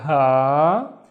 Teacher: it's twice as long because of the alif